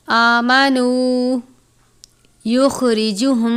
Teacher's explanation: خا کو پر پڑھتے ہیں. خا حروف مستعلیہ میں سے ہے. را کے نیچے زیر ہے، را کے نیچے زیر ہو تو را کو باریک پڑھتے ہیں.